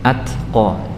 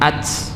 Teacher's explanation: secara makhraj dia berada di ujung lidah yang menempel ke pertemuan antara gigi seri atas depan dengan gusi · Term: huruf ta